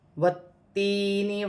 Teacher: تا جو ہے یہاں مشدد ہے، مشدد حرف 2 مرتبہ پڑھا جائے گا